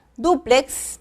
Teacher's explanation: tiene acento en la primera sílaba